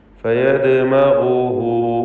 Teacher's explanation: എന്നാൽ ചേർത്ത് വായിക്കുമ്പോൾ ആ ഹായിന് മദ്ദുസ്സിലത്തി സുഗ്റ എന്ന 2 ഹറക്കത്തിൻ്റെ അളവിൽ മാത്രമുള്ള ദീർഘം നൽകണം.